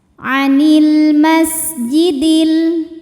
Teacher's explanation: Ada alif lam qamariah. Karena alif lam menghadapi huruf qamariah yaitu mim. Maka lam sukun dibunyikan dengan jelas.